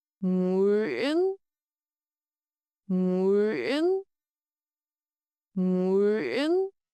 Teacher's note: Today you learn the nasal ng at the start, the glide vowel uyên, and the nasal ending n, and the special Northern ngã tone with a glottal stop and raising pitch